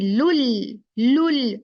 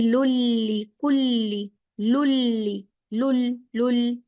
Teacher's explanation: नून गायब, कंप्लीट गायब हो गया, जैसे है ही नहीं। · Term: इदगाम